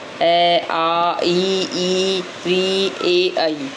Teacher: वे स्वर जिनका उच्चारण करते समय होठ फैल जाते हो। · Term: अवृत्ताकार